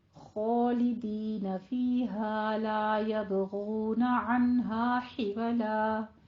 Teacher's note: حولا یہ وسط حلق سے ادا ہوگا · یب میں با پہ قلقلہ کرنا ہے